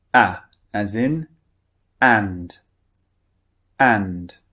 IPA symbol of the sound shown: æ